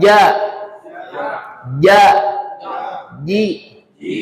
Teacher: Rasakan dari tengah lidah keluarnya ya, dan diarahkan ke langit-langit mulut. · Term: jim